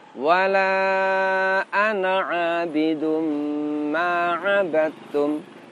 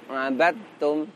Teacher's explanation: Di antaranya dal sukun bersifat qalqalah sedangkan ta tidak qalqalah. Di sini huruf dal sukunnya kita idghamkan ke huruf ta. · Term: idgham mutajanisain